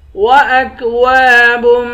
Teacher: واو کے بعد الف ہے، الف حروف مدہ ہے، اس کو ایک الف کی مقدار کھینچ کر پڑھیں گے